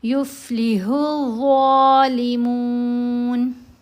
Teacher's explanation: ظا کو موٹا بھی پڑھنا ہے، نرم بھی پڑھنا ہے ایک ساتھ، کیونکہ یہ حروف مستعلیہ میں بھی ہے اور اس کی آواز نرم آواز ہے۔